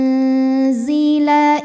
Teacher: Jadi saat kita membunyikan nun sukun, maka ujung lidah kita dipersiapkan untuk menyentuh makhraj huruf zai, yaitu dinding 2 gigi sari bawah ya.